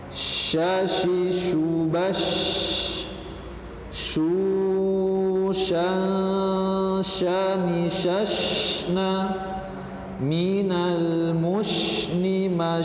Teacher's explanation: huruf sih atau sifat yang melekat pada huruf Sin yaitu adalah tafasyi yaitu ada udara yang menyebar kuat di sana